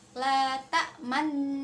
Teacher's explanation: Tak manna ini adalah bacaan ismam dan dibacanya dengan cara bibir mencucu